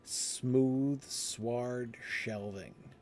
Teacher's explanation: You've got that sibilant sound at the beginning, but the sound moves straight back down your mouth. The M that you're making with your lips, the W that you're making in the front middle of your mouth, and then the sh that you're making further back in your mouth, right?